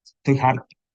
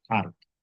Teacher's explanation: Entonces, por ejemplo, pues, harto, y en cambio, en Andalucía es muy común decir, estoy harto, y esa H se convierte en una aspiración